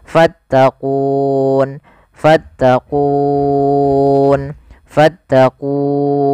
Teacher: kita boleh membaca dengan tiga pilihan boleh dua harakat boleh empat harakat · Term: Mad aridukun